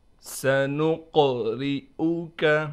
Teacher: قاف پر قلقلہ بھی کریں گے اور قاف کو موٹا کر کے بھی پڑھیں گے، اس کے بعد را ہے، را کو ہم باریک کر کے پڑھیں گے، اس حمزہ کو ہم بالکل نہیں کھینچیں گے اور جھٹکا بھی نہیں دیں گے۔